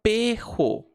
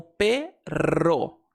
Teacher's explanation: Por exemplo, em espanhol existe essa palavra aqui e muita gente vai pronunciar como perro, mas na verdade uma pronúncia mais comum é fazer o R vibrante